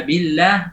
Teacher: Billah ada gunnahnya, ada masuk ke hidung suara, tidak boleh.